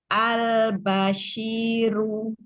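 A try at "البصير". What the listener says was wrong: Runya doma monyong. Monyong tuh ya domah itu dia sampai bulatan kecil bibirnya itu ya.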